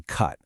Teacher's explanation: these central sounds like in cut, which just like the name says are made more in the center of your mouth